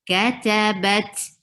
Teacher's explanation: give flow of breath in ta, very hearable. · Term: hams